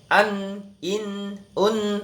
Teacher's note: Gunnah tuh ada angin yang keluar dari rongga hidung kita, dari hidung kita ini